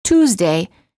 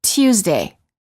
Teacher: some British speakers often add an extra Y sound before the U